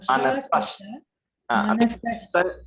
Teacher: Sa is sounding like a sha. Manasash.